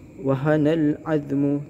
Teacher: alif lam qamariyah, di mana alif lam ketemu huruf ain. Cara bacanya alif lamnya dibacakan. Minni.